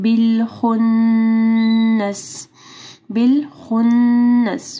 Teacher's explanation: نون مشدد ہے ٹھیک ہے، یہاں پہ غنہ ہوگا